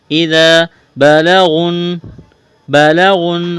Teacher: با اور لام کو جلدی پڑھنا ہے، غین کو موٹا کرنا ہے۔ اس واو اور الف کو نہیں پڑھیں گے، غین کو نون کے ساتھ ملانا ہے۔